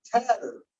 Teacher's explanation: we got the T in front of a stressed vowel, tatter. That's the stressed syllable. So look at that, it aspirated just like a P did.